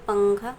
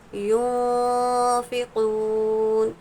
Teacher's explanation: نون کی آواز کو ہم ناک میں چھپا کر پڑھیں گے۔